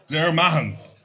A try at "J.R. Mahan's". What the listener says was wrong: I think you're butchering it. Why do you keep emphasizing it like that? You're putting too much touch on it. You're putting too much.